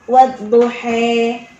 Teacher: Fathahnya mereka ada yang dimiringkan, bukan seperti kasrah. Jadi antara fathah dengan kasrah miring. Nah, itu namanya imalah.